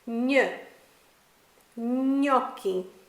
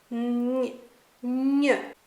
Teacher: The sound almost sounds like an N and a Y squished together and said really quickly.